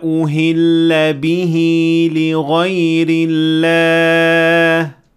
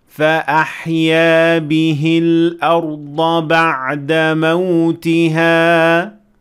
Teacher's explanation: we said bihi with an extension of two harakat because of the symbol of the linking Mad. But in the second example, we said bihi without any extension because there is no sign of a linking Mad.